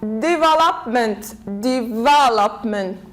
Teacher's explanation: say devopment 1 2 3 so we put the stress here stress falls on the third syllable from the end